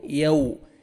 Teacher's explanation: वाव लीन है, वाव जज़म से ज़बर है, नरमी से अदा करेंगे · ज़ाल को नरमी से अदा करना है, जिन नहीं पढ़ना ताकि जा में आपका आवाज़ मिक्स ना हो। नरमी से अदा करेंगे, ज़ाल को अपने मखरज से अदा करेंगे।